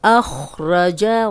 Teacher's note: را پہ زبر ہے، را کو موٹا پڑھیں گے